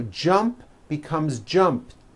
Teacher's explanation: the final sound in jump is a P which is unvoiced so when you put it in the past tense all you do is add a T so jump becomes jumped with a T sound at the end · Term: unvoiced T